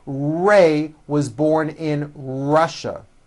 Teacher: Notice how my lips come forward on all my R's and W's.